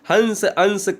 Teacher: अनुस्वार का उच्चारण की कंडीशन है की इसका उच्चारण नाक से किया जाता है